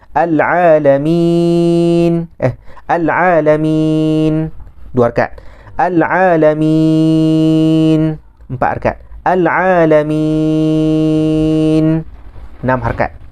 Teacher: Maka ada 3 wajah, yakni 2, 4, 6.